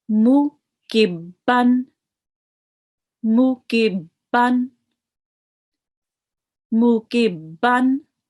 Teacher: So notice I'm reading this hardened. The ba with the tashdid, I'm reading it hardened.